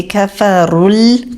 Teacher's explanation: را پیش کے ساتھ ہے، موٹا پڑھا جائے گا